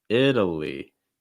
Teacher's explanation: Short I sound, fast D sound, schwa sound, and an ending with a long I sound.